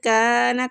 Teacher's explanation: کان کاف کو کھینچیں گے الف مد کی وجہ سے